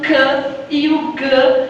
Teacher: o c e o g que são explosivos dorsais